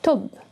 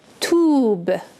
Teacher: Okay, if I had ta waw ba, it would be tube. Okay, so that's much longer sounding of the oo sound